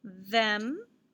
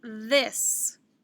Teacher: than them and this is the voiced th